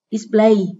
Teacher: đây là động từ có 2 âm tiết, trọng âm rơi ở âm tiết số 2.